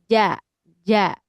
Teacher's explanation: huruf jim itu tempat keluarnya di tengah lidah